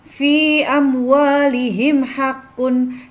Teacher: Mim sukun bertemu dengan huruf H, dibaca jelas dengan bibir yang rapat, maka termasuk bacaan idhar safawi